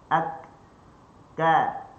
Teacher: Dia syiddah dulu, dia tahan dulu, bertemu dengan sempurna, lepas tu baru dia ka, baru dia buka mulut.